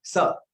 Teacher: जीभ कहां छुई? दांतों को, दांतों को छुई और बोला गया स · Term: दंत्य स